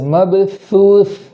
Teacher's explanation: سا کو اس طریقے سے پڑھیں گے کہ زبان تھوڑی سی باہر آئے، اس کا سیرا باہر آئے، اس طریقے سے.